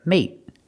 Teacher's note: we use a stop T at the end put the tongue up and stop the air